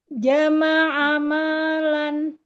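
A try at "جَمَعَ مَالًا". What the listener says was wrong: Jama'ama terhempas. Manya kepanjangan. Dua.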